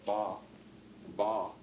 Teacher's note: And for example, when you produce a word, a sound, a syllable like ba, ba, if you could look inside your mouth when you're making the B, you would see that your al-an is pressed back, and it's closing off the nasal chamber so that no air comes through it, and the air just gets completely blocked, ba, in your mouth.